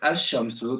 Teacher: the lamb's there, but we're not pronouncing the lamb